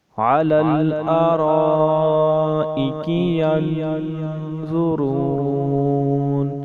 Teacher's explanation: یہ مد متصل ہے کیونکہ حمزہ اسی کلمے میں ہے، اس لیے ہم اسے 3 الف کی مقدار لمبا کریں گے۔